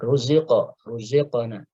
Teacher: Di sini ada qaf, ya, qalqalahnya dibaca tafkhim, ya. Kenapa? Karena qaf termasuk huruf isti'la.